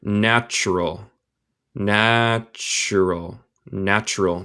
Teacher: Yo digo el T más como CH en mi acento, el acento estadounidense.